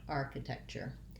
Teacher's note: my tech syllable doesn't have that T. Because that T is part of the CH sound, the chur sound, architecture.